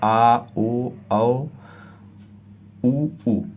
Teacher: कुछ स्वर हम जीभ के पश्च भाग से बोलते हैं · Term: पश्च स्वर